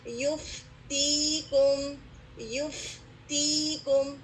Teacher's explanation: اور یہ کہ اوپر کے دو دانت آپ کے ہونٹ کے گیلے حصے سے لگیں گے